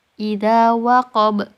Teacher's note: Huruf ba dibaca sukun dan memantul. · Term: qalqalah